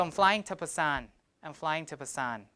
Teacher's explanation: So to will become ta with schwa.